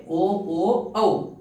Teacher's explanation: round ಮಾಡಬೇಕಾಗುತ್ತೆ ಹಾಗಾಗಿ ಅವು ಏನತಲಿ ಕಂಠ ಮತ್ತು ತುಟಿಯ ಸಹಾಯದಿಂದ ಉಚ್ಚರಿಸಲ್ಪಡುವ ಅಕ್ಷರಗಳು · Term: ಕಂಠೌಷ್ಟ್ಯ